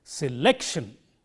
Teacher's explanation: the second syllable, has to stand out from the other syllables. In other words, you have to say this syllable louder than the others.